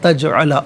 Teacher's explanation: تجعل جیم ساکن ہے, یہاں قلقلہ ہوگا. تجعل آواز لوٹتی ہوئی محسوس ہونی چاہیے